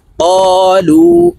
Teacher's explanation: জবরের বাম পাশে খালি আলিফ মদের হরফ, তো এই কফকে এক আলিফ টেনে পড়তে হবে